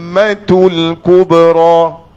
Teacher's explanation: Wajib gunnah pada mim. Jadi menebal pada mim dengan kita memberikan wajib gunnah. Jadi bacanya macam mana? · Sebab dia ada dua kali dengung.